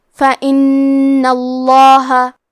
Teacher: کلمت فَإِنَّ میں حرف نون کی تشدید کو ظاہر کرنا ہے اور کیونکہ تشدید زبر کا ہے لہذا لفظ الجلالہ کے لام کا حکم ہے تفخیم تو ہمیں حرف اللام کو موٹی آواز میں پڑھنا ہے